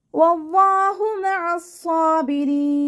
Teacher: വാവ് ഉച്ചരിക്കുന്ന സമയത്ത് ചുണ്ടുകളെ വട്ടത്തിൽ പിടിച്ചു കൊടുക്കുക. അവ്വാ എന്നുള്ള നാമത്തിൻ്റെ മുന്നേ അക്ഷരത്തിന് ഫതഹ് വന്നതുകൊണ്ട് അവ്വാ എന്നുള്ള നാമത്തിലെ ലാമിനെ നമ്മൾ ഉയർത്തിയിട്ട് ഉച്ചരിക്കുക.